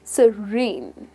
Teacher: You're going to stress the second syllable, which is serene.